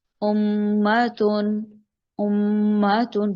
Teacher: میم اور نون کی آواز کو ہم نے ناک میں لے کر جانا ہوگا ایک الف کے برابر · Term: غنہ